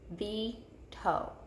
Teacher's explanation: we hear that long E before our chin hits our hand. So the accented E is in the first syllable.